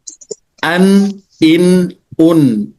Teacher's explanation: Maka nunnya masuk kepada makhraj ujung lidah menyentuh ee langit-langit yang condong atau hampir menuju kepada ee bagian tempat tumbuhnya gigi seri. Tapi tidak tidak tepat di situ.